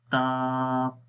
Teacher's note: زبان کی نوک اوپر والے سامنے کے دانتوں کی جڑوں پر لگ رہی ہے تو اس وجہ سے تا ادا ہوتا ہے، یہ اس کا مخرج ہے۔